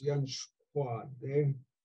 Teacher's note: So again, the short u of shu gets dropped. But since the following consonant K is a roundable consonant, then it's rounded by the preceding U. So when the U drops out, it's not yanshkade, it's yanshkwade.